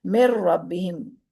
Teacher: نون ساکن اور تنوین کے بعد جب لام اور را میں سے کوئی حرف دوسرے لفظ میں آ جائے تو وہاں بغیر غننے کے ادغام کریں گے اور نون کی آواز بھی باقی نہیں رہے گی